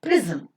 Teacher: But the word is considered to be a disyllabic word with pre as the first syllable, zum as the second syllable. Now between z and m, you don't find any vowel sound. The sound m itself, because of the inherent sonority property, is functioning as the vowel sound here, giving the structure of CCV and CV.